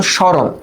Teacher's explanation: মফলা যদি আদিতে থাকে মফালার উচ্চারণটা হয় না। কিন্তু মফলা যার উপরে আশ্রয় করে তাকে নাসিক্য করে দেয়।